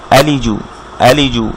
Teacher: এরপর এখানে দেখি হামজার উপরে বা আলিফের উপর ফাতহা লামের নিচে কাসর লি, আলি, জিমের উপর দম্মা জু, আলিজু, আলিজু, কোথাও কোনো টান হবে না।